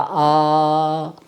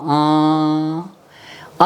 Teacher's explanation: अनुनासिक, नासिका का अनुगमन करता है ये आवाज़, ये स्वन